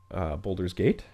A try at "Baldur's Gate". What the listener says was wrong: Baldur's. Not boulders.